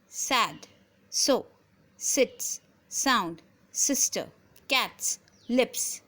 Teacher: we can see that all these words they produces voiceless s sound